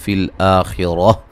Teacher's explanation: خا کو موٹا ادا کریں گے، را کو موٹا ادا کریں گے، وقفاً گولتا کو ہائے ساکنہ میں تبدیل کر دیں گے.